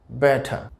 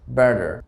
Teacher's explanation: তো এটির ব্রিটিশ উচ্চারণটা হবে ব্যাটা, আর এটির আমেরিকান উচ্চারণ হবে ব্যাডার। অর্থাৎ আমেরিকানরা সাধারণত টিকে ডি উচ্চারণ করে থাকে আর তারা রর উচ্চারণটা করে থাকে